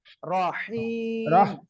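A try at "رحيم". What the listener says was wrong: হ্যাঁ, আপনার ওই সাকিন হয়ে যাচ্ছে, আবার এখানে এখানে সাকিন হয়ে যাচ্ছে। রহিম, একবারে বলেন।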